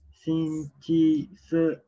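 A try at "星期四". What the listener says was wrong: Se. Se dia betul. Adjust nada je.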